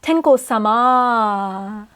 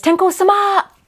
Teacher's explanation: what a small tsu does is it basically adds like a glottal stop